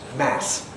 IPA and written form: mæs (mass)